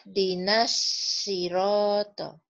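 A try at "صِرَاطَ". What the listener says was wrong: Ya, itu kurang naik pangkal lidahnya, Bu. Naikin lagi, Bu. Biar tebalnya kedengeran.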